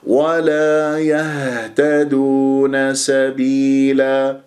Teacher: يا تشوف الهاء تتجلى الصفات في الحروف الساكنة، الهاء فيها هزة اهتزاز الأوتار الصوتية في منطقة أقصى الحلق ويجري فيها الصوت والنفس